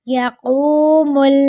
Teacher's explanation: قاف کو ایک الف کے برابر لمبا کریں گے، واؤ مدہ ہو رہی ہے